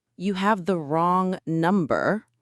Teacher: You've gotten 10 calls for this person already today. Your melody will probably be flatter, maybe a bit faster, and the fall at the end will be sharper.